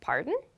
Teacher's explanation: your intonation should go up when you say this pardon